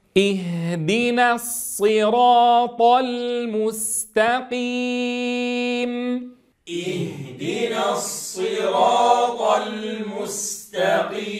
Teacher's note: الانتباه إلى كسر الهمزة عند البدء